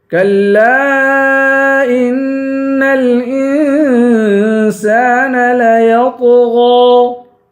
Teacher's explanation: لام کے بعد الف ہے، الف حرف مدہ ہے اور اس پر مد ہے. اس مد کو تین الف کی مقدار کھینچیں گے